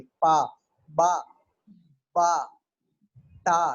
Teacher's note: Block the air and then quick release, तो फिर stop sound निकलते हैं। बोले पा, तो हवा रुकेगी और फिर फौरन से बाहर आ जाएगी